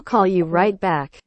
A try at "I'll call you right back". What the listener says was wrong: No, not call đâu. Mấy cái âm này á là o o dài ha. Call, call, call. Back.